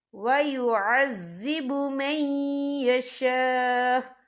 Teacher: وقف کی صورت میں حمزہ ساکن ہو جائے گا